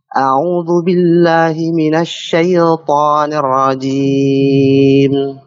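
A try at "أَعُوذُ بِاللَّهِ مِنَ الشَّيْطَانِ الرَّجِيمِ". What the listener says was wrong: Masih untuk ya-nya. Jangan syai. Langsung turunkan coba. Syai. Coba syai-nya saja dibaca.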